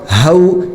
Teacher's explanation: یہ ہا جو ہے وہ نارمل ہا نکلتا ہے، اس کو حلق سے نہیں نکالنا بلکہ نارمل ہا۔